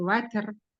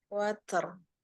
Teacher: Huruf ro-nya aja yang ditebalkan, bukan huruf ta. Watr. Ya.